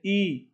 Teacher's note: जब ई बोलते हैं ई तो लगभग बंद है ना